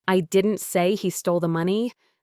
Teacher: the focus on say implies that while I didn't verbally state it, I might have implied it